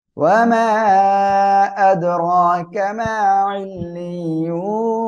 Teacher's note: ইল্লিয়ুন তিন আলিফ টান হবে, নুন সাকিন হবে